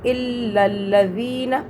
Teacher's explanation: اس نون کو نہیں کھینچنا کیونکہ اس کے آگے الف واو یا پھر یا نہیں ہے۔ یہ الف واو یا ہو تو پھر مدہ ہوتا ہے، یعنی کہ پھر کھینچتے ہیں لفظ کو۔